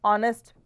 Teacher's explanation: ह का साउंड नहीं, इसमें ऑनेस्ट का साउंड है, ओ का. सो इसलिए क्या है, ये एक वॉवल साउंड से क्रिएट होने वाला वर्ड है, इसलिए हम इसके आगे एन लगाते हैं.